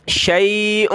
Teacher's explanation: यहाँ पेश की तनवीन है कलरफुल, यहाँ हमने नाक में आवाज़ पैदा करनी है।